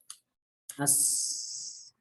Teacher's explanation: makhraj sin itu adalah di torful lisan yang berada pada dua gigi seri bagian bawah